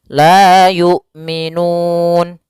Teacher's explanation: panjangnya boleh dua harakat boleh empat harakat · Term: Mad Arid, mad arid disukun